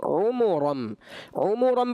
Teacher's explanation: عُمُرًا پڑھیں گے نا ہونٹ گول کر کے، تو پھر بیٹا آپ کا ایسا محسوس نہیں ہوگا کہ آپ نے فتح پڑھا ہے